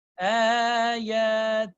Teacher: Ayatihi. Then you have to obviously stretch this ya with the, because there's a sign of mad. So you stretch that between 4 to 6 seconds. Ayatihi, if they both have the sign of mad.